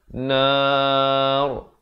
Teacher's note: Kalau kita waqaf, ra-nya dibacakan tebal.